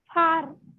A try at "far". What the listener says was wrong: You are reading it as per, par. Okay, you are reading it as par. Don't read it as par. Okay, you will read it as far. Okay, when you read it, because you're changing the sound of F to P, so you're making it par.